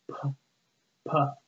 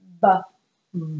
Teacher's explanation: So for the P sound, your voice is off. For the B sound, your voice is on, but your lips are still coming together.